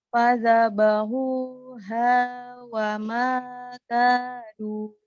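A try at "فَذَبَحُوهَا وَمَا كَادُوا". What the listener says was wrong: Pintar. pinter, alhamdulillah.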